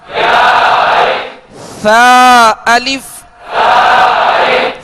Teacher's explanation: ثا کو نرمی کے ساتھ ادا کریں گے، اس میں سیٹی کی آواز پیدا نہ ہو، کیونکہ ثا اور سین میں فرق کرنا ہے.